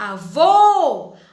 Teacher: a última sílaba é mais forte. Terminou com ó, certo?